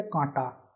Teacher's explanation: নাসিক্য ব্যঞ্জনটি লোপ পায় এবং তার পূর্ববর্তী স্বরধ্বনি দীর্ঘ স্বরধ্বনি হয়ে অনুনাসিক হয়ে যায়। যেমন কণ্টক থেকে কণ্ঠ অ থেকে কাঁটা, হ্যাঁ, এই যে নাসিক্য ব্যঞ্জন লুপ্ত হয়ে গেল এবং আয়ের সঙ্গে চন্দ্রবিন্দু যুক্ত হলো, আনুনাসিক হয়ে গেল।